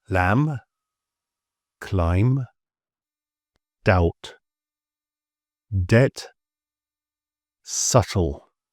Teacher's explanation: B is often quiet if it follows an M or before a T. And historically, in sort of old English, these B's used to be pronounced, but the language evolved and the sound disappeared, but the spelling has stayed.